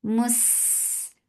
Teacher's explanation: For Dhamma circle ellipse attached with sin. Sin will get sifa rakhawa. It has safir and it is light.